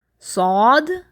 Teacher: آپ کی زبان کا جو مڈل پارٹ ہے وہ تالو کی طرف اوپر کی طرف جائے گا اور منہ میں ہوا بھرے گی، یعنی بھاری لیٹر کو ادا کرنے کے لیے یہ طریقہ کار کرنا ہوگا.